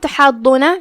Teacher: یہاں ہا کو ہم حلق کے درمیان والے حصے سے ادا کریں گے